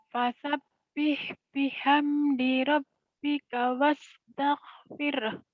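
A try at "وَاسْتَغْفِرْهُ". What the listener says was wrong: Wastagfirah. Banyak orang yang baca wastagfir. Jadi bukan wastagfir. Wastaghfirah. Ada haknya di ujungnya.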